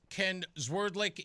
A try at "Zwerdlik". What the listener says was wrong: It's Swerdlik, but that's okay. Swerdlik, but Swerdlik. You're close enough. It's an S instead of a Z. Swerdlik.